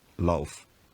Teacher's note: v at the end of a word gets devoiced to f, producing lauf.